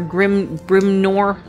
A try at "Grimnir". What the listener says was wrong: Grimnir. No. You said Grimnor.